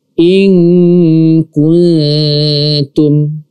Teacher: Berarti kan nun mati atau tanwin. Bertemu dengan huruf kaf. Maka bunyi atau suara ikhfa-nya itu seperti huruf nge.